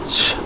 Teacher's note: So ch sound, a brief stopping and then an obstructed release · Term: Affricates